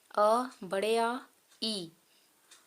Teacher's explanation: जिनके उच्चारण में वायु केवल मुंह से निकलती हो मतलब नाक से ना निकले मुंह से निकले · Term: मौखिक स्वर